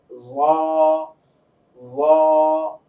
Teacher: জিহ্বার আগাটা উপরের দাঁতের আগার সঙ্গে গিয়ে লাগবে